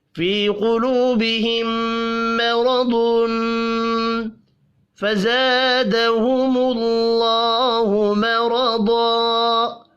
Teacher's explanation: تنوین کے بعد حروف اخفاء میں سے ایک حرف فا ہے، اخفاء حقیقی ہوگا